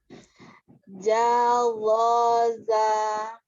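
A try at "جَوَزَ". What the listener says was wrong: Jawaza. Buka lagi.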